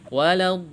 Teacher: mad lazim ya, panjangnya 6 harokat yang harus disertai dengan nabr ya, hentakan suara.